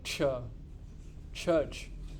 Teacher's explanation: It is a t followed by a sh.